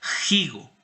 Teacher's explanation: Que se aspiró, que ya no se pronunciaba como una f, como nosotros pronunciamos la f actualmente, sino que se pronunciaba como una como una J. Y la manera en que nosotros pronunciamos la J es como un elemento glotal